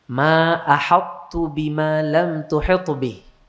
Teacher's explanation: jadi thya dimasukkan ke ta Tidak diqalqalahkan tapi thya tetap terbaca sifat